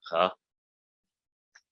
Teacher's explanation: Makes a h sound. It's a voiced velar sound, which isn't in English. H. That's kind of hard to do, so just make it g.